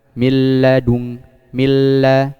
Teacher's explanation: Jadi tanpa ada gunnah, tetap idgham tapi tanpa ada gunnah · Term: idgham bi ghairi gunnah